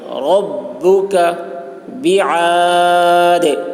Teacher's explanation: عین کو حلق سے ادا کریں گے، دال میں قلقلہ کریں گے